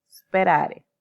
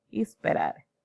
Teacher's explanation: al hablante español, de lengua materna española, quiero decir, se le hace muy difícil comenzar con esa S más consonante sin tener una vocal antes. Esto es porque hay una prótesis de ahí en estos grupos.